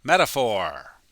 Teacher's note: The PH sounds like an F. And the T sounds like a D when we speak really fast.